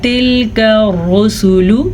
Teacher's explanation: تلک الرسل، یہ کاف باریک کاف ہے تو اسے آپ نے باریک ہی پڑھنا ہے، جانے انجانے میں اس کو موٹی کاف نہیں پڑھنا۔ رسول را کو پر پڑھنا ہے، را کے اوپر پیش ہے